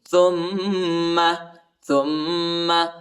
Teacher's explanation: تا کو میم کے ساتھ ملائیں گے اور غنہ بھی کریں گے